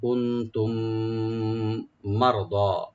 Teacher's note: মিম সাকিনের পরে যে মিমটা আসছে এখানে আমরা এদগাম উৎগুন্না করব